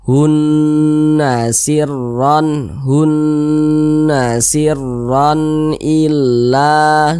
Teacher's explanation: cara bacanya diunahkan atau didengungkan jadi suaranya itu kita tahan kita panjangkan sejenak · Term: gunnah musyaddadah